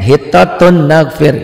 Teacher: Asalnya hitatun jadi hitatu, masukin ke n, hitatun nagfir, gampang kan?